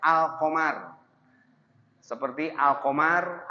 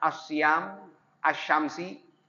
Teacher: alif lam syamsiyah itu yang lamnya tidak dibawa